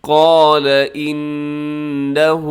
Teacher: نون کے اوپر شد کی وجہ سے غنہ ہوگا